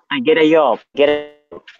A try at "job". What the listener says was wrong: Job, not yob.